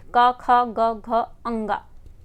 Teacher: घ का उच्चारण स्थान कौन सा है, तो कंठ, क ख ग घ अंगा, तो ये कंठ में आएगा।